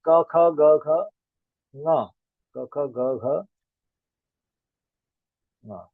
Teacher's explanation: अ अ आ क वर्ग यानी क ख ग घ प्लस ह और विसर्ग, इन सभी का उच्चारण कंठ से होता है